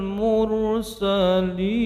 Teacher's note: mursalin, roknya tebal, ujungnya mad arid, lisukun 6 harokat